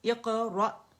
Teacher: را اور حمزہ باریک ہے تو باریک جھٹکا آئے گا